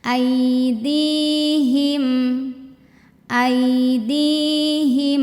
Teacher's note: jangan ditahan tapi tetap ada aliran aidihim tetap ada bunyi m belakangnya ya